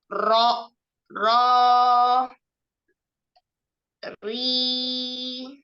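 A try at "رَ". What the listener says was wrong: Hati-hati takrirnya terlalu banyak ya. Ro, ro, gitu ya. Ro, ri.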